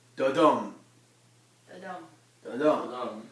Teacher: One short, unstressed syllable, followed by a long, stressed syllable. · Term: iamb